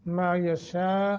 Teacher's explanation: दोनों को एक एक सेकंड के बराबर खींचना है मायशा शीन मद्द मुत्तसिल है 2.5 से 3 या 4 5 अलिफ तक भी खींच सकते हैं